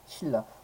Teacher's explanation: 비음 니은이 리을 앞에 왔을 때 리을로 발음되고요